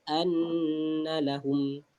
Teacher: Masuk gunnah, wajibul gunnah, wajib dengung. Kita wajib dengung anna, masukkan dengan 2 harakat.